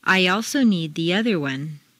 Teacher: After a long E sound, your lips will be pulled back far enough to create a Y glide or liaison.